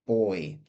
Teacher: we've got the B two lips together · Well, we're talking about some kind of vibration that happens in our throat to produce these sounds. So we've got the b, 2 lips together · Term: voiced consonants